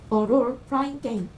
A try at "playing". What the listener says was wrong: Flying은 마치 나는 것처럼 플레이 사운드. Playing. 이거 발음 확실히. Playing.